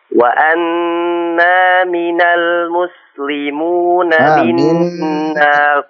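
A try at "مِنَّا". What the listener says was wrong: minnal. Itu nunnya bertasydid itu Syekh. Minnal muslimuna.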